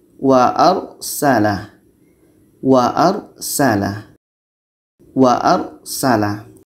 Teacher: ini sebelum R mati ini ada huruf yang berbaris di atas R mati sebelumnya baris atas maka ini dibaca dengan tebal